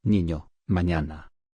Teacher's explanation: Representa el sonido palatal nasal.